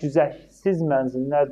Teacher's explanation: Sonu t ilə bitir. Amma güzəşsiz mənzlər deyəndə artıq orda t-nın tələffüz formasını demirik